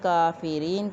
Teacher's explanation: کاف باریک ہے، اس کے اوپر کھڑی زبر کافرین کی، اس کو 1 الف کے برابر ہم لمبا کریں گے۔ یا ساکن را کے نیچے زیر یا مدہ 1 الف کے برابر لمبا کریں گے، اور یا کی آواز یہاں پہ زیر ہونے کی صورت میں باریک ادا کی جائے گی